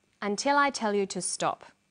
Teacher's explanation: The falling tone at the end tells the listener that the statement is finished